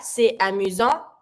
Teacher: because amusant start with the A, so I'm going to pronounce my T to link it with my A